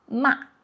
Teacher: this ma it could also pronounce as the fourth tone ma. Okay.